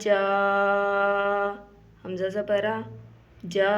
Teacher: مد کو اگر ہم پڑھیں تو مد کو 5 الف کے برابر لمبا کیا جائے گا، جیسے کہ پڑھتے ہوئے 5 انگلیاں کھولیں تو 5 الف کے برابر لمبا ہو جاتا ہے۔ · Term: بڑی مد